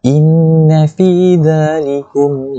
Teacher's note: inna tu kita kena dengung 2 harakat sebab nun yang musyaddadah. Fi dha mat tabi'i 2 harakat. · Fi dha mat tabi'i 2 harakat. Likum, kum mim mati bertemu dengan huruf lam, maka hukumnya izhar syafawi. Jelaskan saja bunyi mim tu, tak perlu dengung.